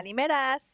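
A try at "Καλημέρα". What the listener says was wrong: Nope, no S.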